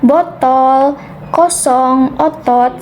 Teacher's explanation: madya bawah belakang dengan posisi bibir semi terbuka